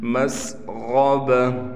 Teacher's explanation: سین کو بھی صاف نکالنا ہے، کہیں سین ہم سے ثا نہ بن جائے، اور غین کو موٹا کر کے پڑھیں گے۔ مسغبہ، گولتا وقف میں ہا بن جائے گی۔